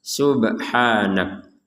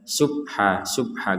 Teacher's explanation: di sini ada ba sukun Subha maka ini harus kita pantulkan subhanak jangan sekedar Subha Subha engak ada pantulannya kalau Subha itu